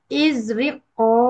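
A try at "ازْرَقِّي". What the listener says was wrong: Bukan. Rokik. Jadi izrokik. Kenapa berubah harokatnya? Izrokik. Izrokik. Ro-nya fathah. kasroh.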